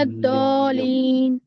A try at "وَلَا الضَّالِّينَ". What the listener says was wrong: ضالین نہیں، ضالین لام پہ تجدید ہے تو ولا ضالین، ضالین نہیں۔ ہم نے کیا سیکھا؟ اگر کسی بھی لیٹر کے اوپر تجدید ہو تو اس لیٹر کو دو مرتبہ پروننسیشن کرنا ہے۔ تو اگر ضالین ہے تو لام ایک بار آ رہی ہے، ایل ایک بار آ رہی ہے، تو ولا ضالین ولا ضالین،